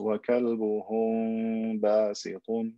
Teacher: So instead, I add extra ghunna to the mim, ikhfa shafawi. I elongate the M sound with a ghunna to make it easier to pronounce.